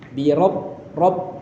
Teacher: R ini ada tasdid harus kita tahan